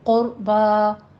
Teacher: قربا میں قوف بھی مفخم پڑھی جائے گی اور را بھی. قربا، با میں فتح قائمہ ادا کرنی ہے، قربا نہیں کہنا.